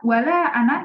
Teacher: dia dibacanya dengan tawasud 4 harokat. Sebabnya karena dia bertemu dengan hamzah.